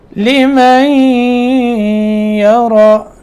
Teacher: نون کا ادغام ہو جائے گا آگے یا میں